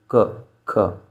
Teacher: जब हम इनको बोल रहे हैं तो हमारा मुख का कोई भी और अन्य पार्ट कहीं पर भी टच नहीं हो रहा, सिर्फ गले से ही आवाज़ आ रही है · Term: कंठ व्यंजन